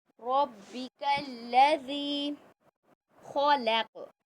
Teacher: ज़ी को खींचेंगे, या मद्दा है, खौ को मोटा पढ़ेंगे और क़ौफ़ को भी मोटा पढ़ेंगे क्योंकि क़ौफ़ भी मोटा हर्फ है।